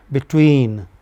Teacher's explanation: in a word like between be takes maybe 100 nanoseconds but tween takes 700 nanoseconds